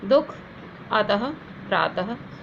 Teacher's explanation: अर्थात इसका जो दो बिंदियाँ जो पीछे लगी होती है, इनको हम विसर्ग कहते हैं, और इनका जो उच्चारण होता है, इनके उच्चारण करने पर ह कुछ ध्वनि निकलती है